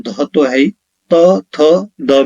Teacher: दंत व्यंजन वह होते हैं जिन व्यंजनों के उच्चारण में जिह्वा यानी जीभ की नोक ऊपरी दांतों को स्पर्श करती है